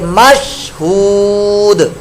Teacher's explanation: شین جب ساکن ہوتی ہے تو اس میں قلقلہ نہیں ہوتا، لہذا یہاں پر مش نہیں کریں گے بلکہ مشہود، دال ساکن وقف کے اندر قلقلہ یہاں پر ہوگا۔